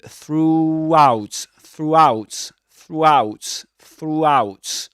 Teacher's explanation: if you narrow your lips too much in through, you'll notice a linking w.